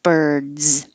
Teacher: So your voice is already on for the vowel and then a D, so keep it on for the Z. Birds. You should feel vibration the whole time.